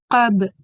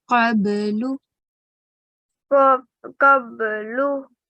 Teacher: So you did a jerking sound in the ba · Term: qalqala